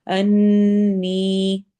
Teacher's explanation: نی میں یا مدہ ہے، تو ہم یہاں پہ لمبا کریں گے، 2 حرکہ